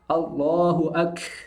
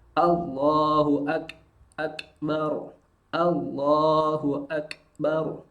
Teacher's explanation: Sedangkan huruf kaf mengalir tapi hanya berupa percikan nafas. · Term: kaf sukun